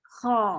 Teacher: ओ की आवाज है, लेकिन होंठ नहीं गोल होने चाहिए।